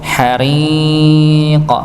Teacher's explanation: dibaca tipis karena dia kasrah